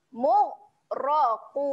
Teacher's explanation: Mu-ro. Nah, waktu sebut ro tu lidah hujung lidah kita cepat-cepat naik gusi atas eh.